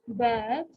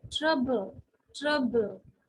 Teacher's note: if you say bad it is coming from your voice box a vibration is there